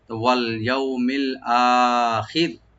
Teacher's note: রা একদম পাতলা হয়ে যাবে, লাইট করে পড়বো